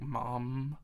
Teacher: when you say the M sound, it's going through your nose